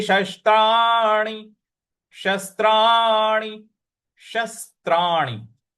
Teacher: बड़ा वाला श, उसके बाद छोटा वाला स पर हमको आघात देना है।